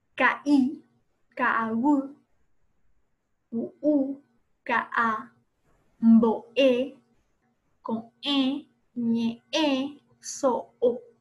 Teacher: El puso es una consonante glotal intervocálica, es decir, va entre vocales y produce una interrupción glotal entre las mismas.